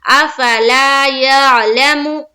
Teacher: मीम के ऊपर पेश की हरकत है, पेश को जल्दी पढ़ें, थोड़ा भी ना खींचे, मारूफ पढ़ें, मजहूल आवाज से बचे।